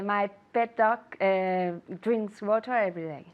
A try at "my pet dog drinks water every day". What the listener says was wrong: Poco más rápido.